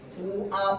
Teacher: 맞죠? 자, 그래서 반모음 오 플러스 아가 와가 되죠